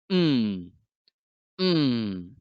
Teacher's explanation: The first type of nasal consonant is an M in the IPA symbol, and it represents the sound mm, mm. Now the sound is produced by closing the mouth completely and then passing the voiced air through your nose. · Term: nasal consonants